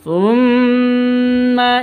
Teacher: Mim tasydid bacaan gunnah musyaddadah, dengung.